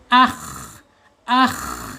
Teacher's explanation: sifat alhams ya ketika dia sukun